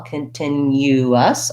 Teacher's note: It's basically just the same as continue, but we add a couple of syllables. So again, I have my unstressed schwa, kun, in my first syllable. I have stress before the tin, continuous, still a clear T and the lax I vowel, continuous.